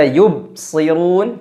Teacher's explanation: Kesalahan huruf ba yang ketiga adalah tidak memantulkan ketika dia berharokat sukun.